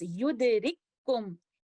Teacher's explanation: Here we can see mutamathilan letters appearing next to each other within the same word. And the first letter kaf will be completely merged into the second letter kaf. This idgham will be idgham kamil, and that's why we can see shadda on the second letter indicating idgham kamil, and we will recite it like this, yudrikkum.